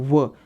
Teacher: दंत ओष्ठीय। दंत ओष्ठीय का अर्थ होता है दांत और होठ दोनों से टकर कर ध्वनि बाहर आती है। बोलते हैं ना व, तो हमारे दांत भी टकरते हैं, एक साथ सिकुड़ते हैं और होठ भी आपस में टकरते हैं, व, इस कारण का नाम रखा दंत्योष्ठीय वर्ण।